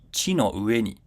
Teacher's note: because it's final high pitch accent, it comes down before ni